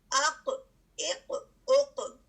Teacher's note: اس جھٹکے کو جو ہم باؤنسنگ بیک محسوس کر رہے ہیں آواز کو، اس کو کلکلا بھی کہا جاتا ہے